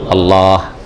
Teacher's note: পাশাপাশি যখন দুই লাম হয়েছে লামকে লামে ইদগাম করা হয়েছে